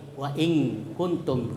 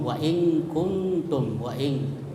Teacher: sehingga nunnya itu wa in seolah-olah berbunyi eng, wa in kuntum, karena dia masuk ke huruf kaf dan mendengung wa in kuntum, wa in. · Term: ikhfa